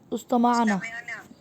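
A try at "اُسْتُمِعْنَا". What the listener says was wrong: उस्तमिअना, उस्तुमिअना, ऊ और ई की साउंड आएगी। उस्तुमिअना।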